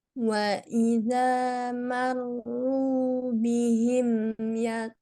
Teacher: gainnya agak kurang tebal sedikit